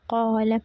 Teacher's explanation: அப்படி கா பண்ணும்போது அலிப் நீட்றோம். அது ஹெவி ஆகுது